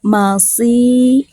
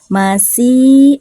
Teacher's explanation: dalam melafalkan huruf sod itu agak terdengar tebal ya, beda dengan sin